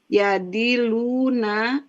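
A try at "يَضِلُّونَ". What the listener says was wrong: dilluna, tasdidnya.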